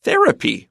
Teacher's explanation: Therapy stress is on the first syllable.